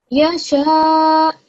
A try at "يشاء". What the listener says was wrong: okay, well done. Well done, mashallah.